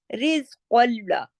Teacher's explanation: جب لام میں ضم ہوگا تو لام کی آواز کو ہم باریک کر دیں گے. لام موٹا حرف نہیں ہے, کاف اور میم بھی آگے موٹے حروف نہیں ہے. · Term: ادغام تام بلا غنہ